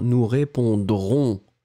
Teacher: si vous ne prononcez pas le I, moi j'entends le futur